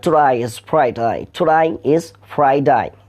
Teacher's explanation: ওরা বলছে স্যাটারডে, মানে আমরা যেটাকে ডে বলি, আমরা যেটাকে ডে বলি, ইংলিশটা বলে ডে, আর অস্ট্রেলিয়ানরা বলে ডাই